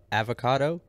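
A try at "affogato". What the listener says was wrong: It's two F's, so you pronounce the F's, not like avocado, like avocado.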